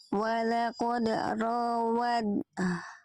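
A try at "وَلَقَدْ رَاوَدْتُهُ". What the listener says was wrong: Jangan pakai dal. Jadi langsung masuk tanya ya. Jangan menyisakan bunyi ed, tapi langsung ed. Langsung kamil. Dia idgom mutajanisa ini langsung kamil masuk sempurna ke taknya. Jadi anggap tidak ada dalnya.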